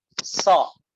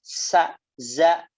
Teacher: Huruf so dibaca menebal karena suara dan pangkal lidahnya naik ya. So. Sedangkan za dengan sa ya dibacanya menipis. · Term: sifat tebal